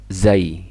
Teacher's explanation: Kalau zai itu ujung lidah agak sedikit ke belakang dan tidak nempel ke gigi atas.